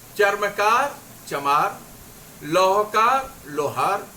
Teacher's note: पहले वाली ध्वनि पे जब बल दिया तो दूसरी ध्वनि कमजोर हो गई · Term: बलाघात